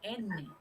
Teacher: la n También necesita la punta de la lengua pero suena en el paladar